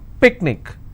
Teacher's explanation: picnic I will stress on pick